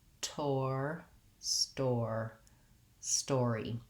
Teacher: note that the E is a tense E sound, even though it comes in an unstressed syllable. So making sure that you use that tense E, don't let your voice or your vowel relax too much, even though it's short and unstressed.